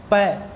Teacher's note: पै में बोलूँगा तो दोनों हमारे होठ है, ओष्ठ है, वो क्या करते हैं, आपस में मिल जाते हैं।